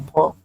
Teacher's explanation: ओष्ठ, महाप्राण, घोष व्यंजन वर्ण का उदाहरण